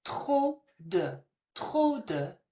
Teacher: The P is not pronounced, so it sounds like trop.